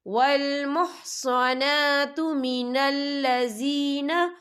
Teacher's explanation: اور آگے دیکھیں مین الذی، یہاں پہ یا مدہ ہو رہا ہے، یا ساکن ہے، یا ساکن سے پہلے زیر ہے تو ہم یہاں 2 یا 3 حرکت کے برابر کھینچ کے پڑھیں گے